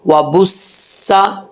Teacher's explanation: آگے سین ہے، سین کو پڑھتے ہوئے سیٹی آنی چاہیے، اور سین کے اوپر شد بھی ہے، دو دفعہ پڑھا جائے گا